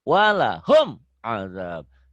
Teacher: Jelas bunyi mim mati. Tapi tidak dihentak. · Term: idhar